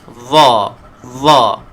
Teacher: Apa yang membezakan huruf dha adalah huruf isti'la dari segi sifatnya, iaitu ada sedikit tebal. Ada tebalnya.